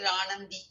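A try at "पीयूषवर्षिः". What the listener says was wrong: No, when you are going to say Ranandi, you have to ensure that you don't stop after Varshai. You stop Piyusha Varshaihi, then you start with Anandi. Then you don't start with Ranandi. But make sure that you add a Visarga there. Piyusha Varshaihi.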